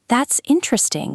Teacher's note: with a rising tone and genuine warmth, it means I really think it's interesting. I'm engaged.